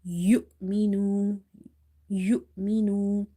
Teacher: when you see that there is a sukoon sign on top of Hamza, you give it a sudden pause.